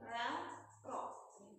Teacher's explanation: inhiraf artinya miring, lamro, yang miring tuh lidahnya ketika dilihat dari samping